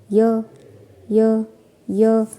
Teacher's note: य बोलेंगे तो जो हमारी जीभ है वो तालु को टच करिए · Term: तालव्य